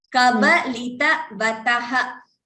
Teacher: So what you're doing is this Kabalitavathah I'm hearing a Mahaprana. Kaba is Alpa Prana. There is no Mahaprana as such here.